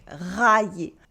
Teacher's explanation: ILL is the sound Y without any I or L sound involved at all. It only makes the sound Y.